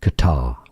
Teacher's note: it's more generally pronounced as Qatar with a stress on the second syllable. But some say it as Qatar as well or more often the Americans say it as cutter.